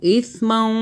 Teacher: ثا کو زبان باہر کریں، ثا کو سافٹ پڑھنا ہے